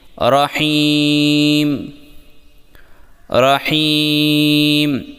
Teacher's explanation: رحیم کے اندر را کو موٹا پڑھیں، ہا کو حلق سے نکالیں اور یا کو یہاں مد عارض کی وجہ سے تھوڑا زیادہ لمبا کر کے میم پر روکیں